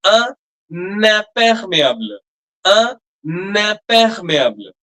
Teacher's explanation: the nasal will stay, but the n sound will also come